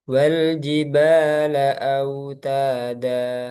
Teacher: Ketika ada mat iwad, dia tetap dibaca eh, dua harokat. Kan kadang mungkin terpengaruh nada itu kadang dipanjang-panjangin.